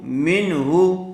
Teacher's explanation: نون ساکن کے بعد حروف حلقی میں سے ہا آیا ہوا ہے، اس لیے بغیر غننے کے جلد اظہار کر کے پڑھیں گے۔